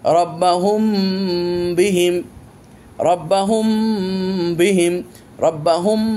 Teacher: এটাকে এখানে আমরা গুণনা করেছি, কারণ মিম সাকিনের পর বা এসেছে, মিম সাকিনের ইখফা হয়ে গেছে।